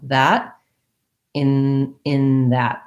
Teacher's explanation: What you want to feel is that your tongue is closing off further back for the N rather than the tip of the tongue